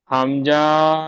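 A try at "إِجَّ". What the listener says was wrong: হামজা টান হবে না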